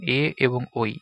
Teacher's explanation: এ এবং ঐ এগুলোকে কণ্ঠ তালব্য বর্ণ বলা হয়। এগুলো কণ্ঠ ও তালু উভয় স্থানে সাহায্যে উচ্চারিত হয়